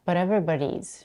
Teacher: She reduces the vowel in but to a schwa and pronounces the T as a glottal stop.